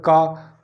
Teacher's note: का बोलने पर जो हमारी जो जिह्वा है, जिह्वा हमारी कंठ से हमारी टकराती है